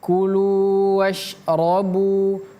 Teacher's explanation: Kulunya panjang 2 harokat